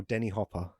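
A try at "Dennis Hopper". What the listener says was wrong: do you think because Denis Villeneuve is pronounced that way, you think all Dennises are Denis?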